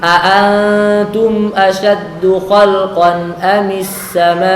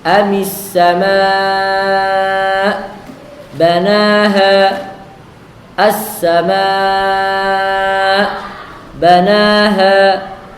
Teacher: di saat kita berhenti waqaf pada mad wajib, maka dipanjangkan dengan panjang 6 harokat di saat waqaf.